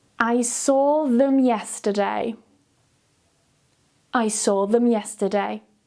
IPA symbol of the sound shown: ð